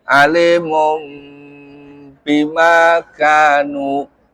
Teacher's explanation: Iklab membalik ya. Berubah bunyi nun jadi bunyi mim. Alimum bima kanu.